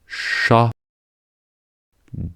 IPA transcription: ʃ